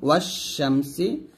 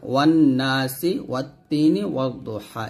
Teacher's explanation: আমি যদি হরফে শামসি একটা উদাহরণ দেখাই, এখানে দেখুন যে হরফে শামসির উদাহরণ ওয়াশ শামসি, এই যে এখানে ওয়াওকে শিনকে ধরবে, এই আলিফ এবং লামের উচ্চারণ করা যাবে না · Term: হরফে শামসিয়া